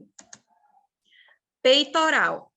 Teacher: tem um I assumiu a função de uma semivogal tudo na mesma sílaba é o que é um ditongo